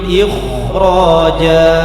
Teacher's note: Dibaca tebal karena ra adalah tafkhim, ra fathah.